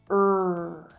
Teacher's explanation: To make that sound, my tongue is pulling back in my mouth and up a little bit in the middle. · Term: R sound